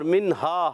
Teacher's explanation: نون ساکن بعد ہا حرف ہلکی میں سے آ رہا ہے، اظہار ہلکی کا قاعدہ ہوگا، اظہار ہوگا، غنہ نہیں کریں گے